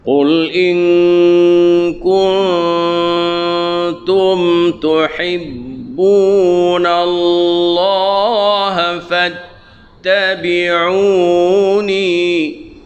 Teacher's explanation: nun mati bertemu dengan kah tu kena dengung, nun mati bertemu dengan ta pun kena dengung juga.